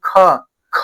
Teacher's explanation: कम हुआ। लेकिन ख, ख बोल रहे हैं तो क्या हो रहा है? ज्यादा हवा निकल रहा है। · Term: महाप्राण